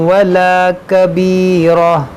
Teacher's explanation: دیکھیے گول تا پر جب بھی آپ رکیں تو اس کو ہا ساکنہ سے بدل دیں، یعنی کبیرہ پڑھیں، اور پھر اعادہ کریں گے تو پھر تا پڑھیں گے.